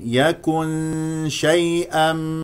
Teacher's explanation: بعد النون الساكنه شين اذا اخفاء بمقدار ح غنه بمقدار حركتين الغنه تكون مرققه لان الشين مرققه